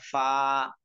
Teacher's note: আমরা 14 নম্বর মাখরাজে আসি 14 নম্বর মাখরাজ নিচের ঠোঁটের পেট সামনের উপরে দুই দাঁতের আগার সঙ্গে লাগাইয়া